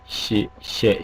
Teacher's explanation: 시세는 확실하게 구개음인 시, 셰 이런 소리가 났다고 생각되고 있습니다